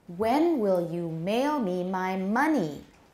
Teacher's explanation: tonic stress 还是在 money 上, 它是最后一个实词